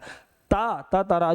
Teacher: दांत से बोला जाता है